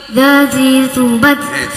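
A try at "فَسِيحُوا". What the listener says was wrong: Sa kok enggak?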